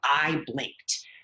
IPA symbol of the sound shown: t